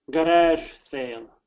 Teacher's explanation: the faster we say it, the more you're going to hear a zh, especially if we connect it to the word sale. So if we have these two words together and we say it quickly, you're probably going to hear a zh.